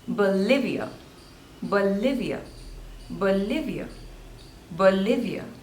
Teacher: again there are three syllables and the stress is on the second syllable